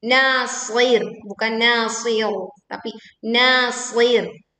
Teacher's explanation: ro sukun karena wakaf dibaca tipis